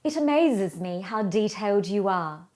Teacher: the consonants received more voice vibration at the ends of words as required